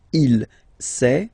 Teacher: Final T not pronounced.